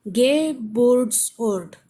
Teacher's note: There are three syllables, but the stress is on the middle one. Burt. Geburtsort.